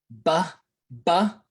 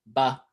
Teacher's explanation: to touch your bottom and top lips every time ba and the only way you make those sounds is to use both of your lips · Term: bilabial